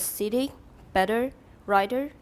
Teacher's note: the consonants between the vowels in words such as sitting better writer is not really a stop but a quick tap in which the tongue tip is tongue tip do it again